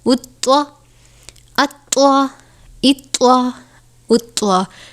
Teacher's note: طوا حروف مستعلیہ میں سے ہے، اس لیے اس کو پر پڑھنا ہے · طوا حرف قلقلہ بھی ہے، طوا حرف مستعلیہ بھی ہے اور یہاں پر طوا مشدد بھی ہے، تو ہم اس کو تھوڑا جماؤں کے ساتھ ادا کریں گے